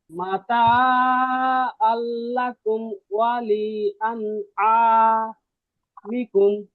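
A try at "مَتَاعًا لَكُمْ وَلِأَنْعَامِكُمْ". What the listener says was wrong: হ্যাঁ, হামজা আর আইনের পার্থক্য আরেকটু করতে হবে, একটু।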